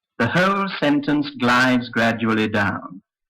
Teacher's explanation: described what I call the Glide down the tune in which the first stressed syllable of the sentence is said on a fairly high note the following stressed syllables are said gradually lower and lower until you come to the last stressed syllable this syllable starts